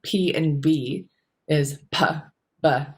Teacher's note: P is aspirated and B is not.